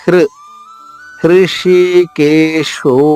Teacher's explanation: హ కి ఋత్వము ఋకారం అన్నమాట తేలికగా చెప్పాలి